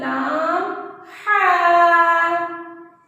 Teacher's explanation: हा की अदायगी हम हलक से करेंगे कि हलक से इसकी आवाज अच्छे से आए हमारी